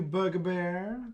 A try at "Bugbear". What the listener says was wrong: Did you just call them Book-a-Bear? That's what it sounded like you said. It's Bugbear.